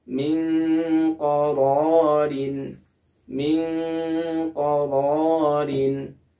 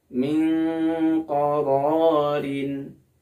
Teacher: Ketika mengucapkan nun sukunnya, kita sudah bersiap kepada makhraj huruf qaf. Nah, karena dia masuk kepada huruf ikhfa ab'ad, maka bunyinya menjadi eng